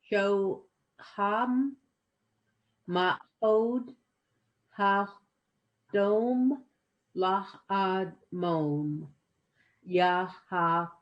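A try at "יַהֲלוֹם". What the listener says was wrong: Good, good.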